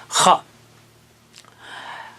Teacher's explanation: اور اس میں بھی جو ہے آواز ہوا اور زور کی آواز ہے خا۔ خا بھی حلق کے اوپر کے حصے سے ادا ہوتا ہے جہاں سے غین ادا ہوتا ہے